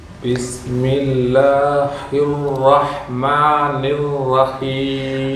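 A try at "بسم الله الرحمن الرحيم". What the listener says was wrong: அந்த ஹா கொஞ்சம் வரணும். ஹிர் ஹிர் ஹிர். ஹா மட்டும்தான் கொஞ்சம் மிஸ்டேக் ஆகுது.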